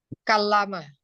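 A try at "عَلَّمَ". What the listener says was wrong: Ah, taklim pakai ain. Ya, allama, bukan kalama. Allama pakai ain ya.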